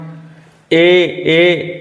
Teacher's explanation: कंठ और तालू से बोले जाते हैं